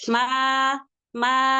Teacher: ma dua harakat saja jangan Kepanjangan